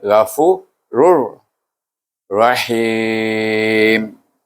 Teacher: Kemudian ra tu tanwin bertemu dengan ra. Kita baca dengan idgham bila gunnah, iaitu tanwin bertemu dengan huruf ra.